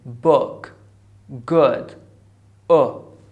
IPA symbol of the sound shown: ʊ